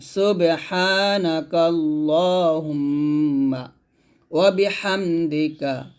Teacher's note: হা মিম পেশ হুম এখানে গুণ করবেন